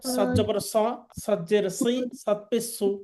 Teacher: সদ জিহ্বার আগা, সামনের নিচের দাঁতের আগা থেকে শীষ সহ মোটাভাবে উচ্চারণ করতে হবে।